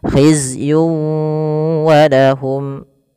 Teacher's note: tanwin melafal yun ketemu dengan wau. Maka cara membacanya masukkan tanwin kepada huruf wau. Tidak lagi hizyun walahum tapi langsung wau.